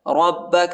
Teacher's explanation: را کو با کے ساتھ ملائیں گے، با کو سختی کے ساتھ شدت کے ساتھ پڑھنا ہے۔